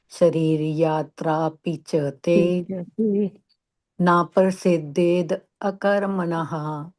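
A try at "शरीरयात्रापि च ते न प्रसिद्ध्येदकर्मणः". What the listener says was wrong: So śarīra, you have to pronounce the A a little bit here. And na pra and not par. Na prasidhyet akarmaṇaḥ.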